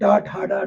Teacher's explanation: जब हम ट बोलते हैं। जीभ हमारी पलट के मुख के छत के पिछड़ी भाग को टच करती है।